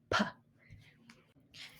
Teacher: in the sound p we see that our lips come together to restrict the air and then be able to produce that sound.